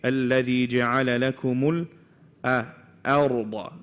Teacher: The alif stays how it is, it's the ra that is heavy.